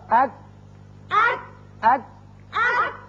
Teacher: کاف ذرا ہٹ کر نیچے کی طرف سے نکلتا ہے اور باریک ہوتا ہے